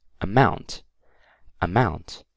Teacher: the stress is on the word mount